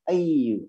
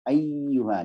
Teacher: kalau ada tasdid seolah-olah ianya itu dua, ayyuha ditekan